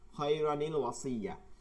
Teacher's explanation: এজন্য এই রয়ের একটা জবর উঠাই দিছি, এবার হয়ে গেছে র। এবার যে আপনি তানবিন উঠাইছেন তার জন্য একটা নুনে জের আনতে হবে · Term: নুনে কুতুনি